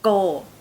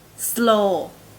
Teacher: In English, the O sounds like O, but in Thai, it's a monophthong and it's a little bit longer. O. So the word go will be pronounced by Thai people as go.